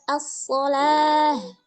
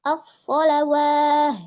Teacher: waw di situ itu nggak terbaca. Dia merupakan ibdal ya, pengganti huruf alif gitu.